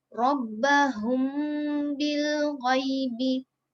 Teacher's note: Dia jumpa dengan huruf ba, jadi bacaan dia kita kena dengungkan dengan kadar 2 harokat. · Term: ikhfa syafawi